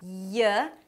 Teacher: For the 'y', the back of the tongue goes up and almost touches the soft palate in the back. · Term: y sound